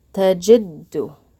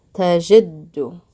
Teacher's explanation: Literally what happens is you end up pausing slightly on the letter that has the shadda, tajid, and then pronouncing that letter again, du.